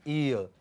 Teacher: from front, okay, closed, unrounded, to, we can say central, between half closed and half open, unrounded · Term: diphthongs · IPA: /i:ə/